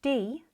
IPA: d